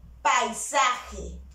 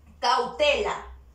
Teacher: Primero una vocal abierta, seguida de una vocal cerrada. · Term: dictongo decreciente